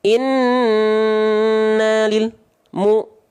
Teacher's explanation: dengan memutus suara huruf lam menjeda suara huruf lam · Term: lam sukun